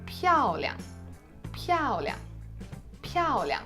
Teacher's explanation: 漂亮 漂亮 漂亮 So when you're pronouncing it, you're really stressing the first word that has one of the 4 basic tones. You're stressing piāo, and this liang with the neutral tone is just like a little tail that follows behind it.